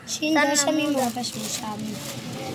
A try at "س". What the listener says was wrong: এটা শিন না সা হইবে না শিন কইলো এটা সা হইবে একবারে কিতাব পড়ো সা আসবো সা জবর সা মিম পেশমু সামু এনে কই এনে সিন ইডসা ইডসা এনে সিন যদি ওই যে